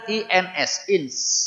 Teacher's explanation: yang diperlukan itu menahan suara n minimal tiga ketokan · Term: ikhfa